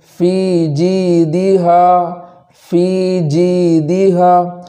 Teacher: تو تینوں مدود کے اندر ایک ایک الف کے برابر تاخیر کریں گے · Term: مدہ